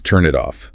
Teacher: The N from turn jumps to it, and the T from it jumps to off. It becomes one smooth word.